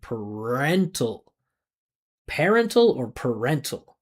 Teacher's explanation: I would say make it a reduction because it's unstressed. I wouldn't pronounce the vowel sound.